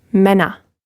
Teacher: you hear that open R sound at the end, and the umlaut, a short sound